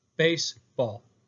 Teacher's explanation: This is a spondee. Now here, it's 2 stressed syllables back to back.